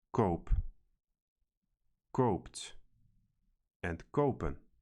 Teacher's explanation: the verb forms for kopen are read koop, koopt, and kopen, with the same long O